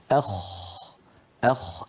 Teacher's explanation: الخاء أعلى بقليل من الغين، وهي أيضا من أدنى الحلق، يعني من منطقة جذر اللسان مع الحنك اللحمي. أخ أخ، لاحظوا بأن المخرج مفتوح بارك الله فيكم.